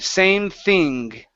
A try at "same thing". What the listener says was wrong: same thing, same thing.